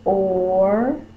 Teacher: OR says OR. It's like you say the long O sound, and then you say the R, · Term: R-controlled vowels